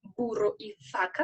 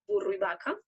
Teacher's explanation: podemos notar que no hacían una diferencia entre B y V.